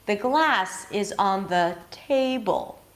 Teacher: while we choose to shine on the content words, the words that bring the content, in this case, glass and table, by going higher in pitch and prolonging them, function words play a smaller role in this show. · In this case, the glass is on the, so I keep going down because these are not stressed words. I'm starting a new word that is stressed, so I'm going to go high in pitch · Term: melody